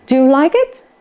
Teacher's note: Câu hỏi yes no question. Thế thì cái ngữ điệu của nó sẽ là ngữ điệu đi lên ở cuối câu